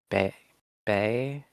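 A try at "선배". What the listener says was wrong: Yours sounds too. You're opening your mouth wider. Bear, but it's not sonbae. Son still needs a lot of work.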